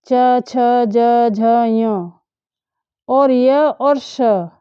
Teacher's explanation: ए और च वर्ग में जितने भी वर्ण आते हैं च छ ज झ य और य और श, इन सभी वर्णों का उच्चारण स्थान तालु है। तालु कहते हैं ऊपर तलवे को, जो मुंह के अंदर होता है ऊपर, उसको।